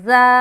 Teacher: اب اجرا کریں گے، اجرا کس طریقے سے کرنا ہے، زا الف خالی سے پہلے زبر ہے، الف مدہ ہوگا، الف مدہ کو ایک الف کی مقدار کے باقدر کھینچ کر پڑھیں گے